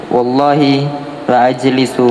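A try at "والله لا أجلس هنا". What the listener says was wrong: la, panjang la,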